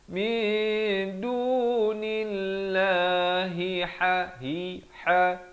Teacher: Hi dipangkal kerongkong, ha di pertengahan kerongkong.